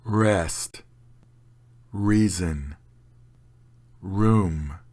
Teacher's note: there is no vibrating noise for the are in English